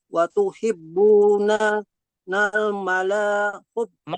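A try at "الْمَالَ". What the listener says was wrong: Mala. Ma-nya panjang. Mala. Wa tuhibbunal mala hubban jamma. Ma-nya panjang. Mala.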